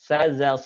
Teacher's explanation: Sa, za, so itu satu makhraj, yaitu dengan hampir menyentuh ujung lisan kita dengan gigi seri bagian bawah.